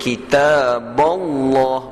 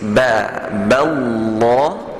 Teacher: Jadi ba kena tetap nipis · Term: ba nipis